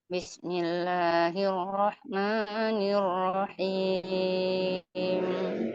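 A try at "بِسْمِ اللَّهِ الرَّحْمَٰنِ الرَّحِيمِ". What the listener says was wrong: Ya, betul.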